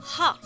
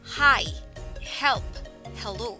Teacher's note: It is formed by slightly constricting the back of the throat as air is passed through. The vocal cords are not engaged, so it is an unvoiced speech sound.